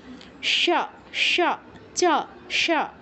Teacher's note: তালব্য শয়ের উচ্চারণ তালুতে, মানে চ উচ্চারণ করতে আপনার যেই স্থানে জিহ্বা স্পর্শ করছে, তালব্য শয়ের উচ্চারণ করতেও জিহ্বা ঠিক একই স্থানে স্পর্শ করবে